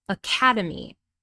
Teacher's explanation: And the second syllable is stressed, academy. Notice the vowel sounds in the first and third syllables. Different spelling, but in speaking, they're both reduced to a schwa sound.